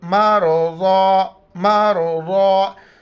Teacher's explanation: را سے پہلے زبر اے اور ضاد موٹے الفاظ دونوں موٹا کر کے پڑھیں گے. میم را زبر مر، ضاد الف زبر ضا، مرضا مرضا.